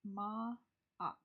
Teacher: the apostrophe in between the two A's is a glottal stop